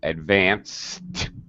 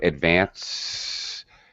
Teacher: It's just air coming out in the last sound. Advance. There's no sound. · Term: unvoiced